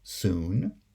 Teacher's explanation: The high back vocalic approximant is pronounced as a high back vowel oo when it's the sonority peak, like in soon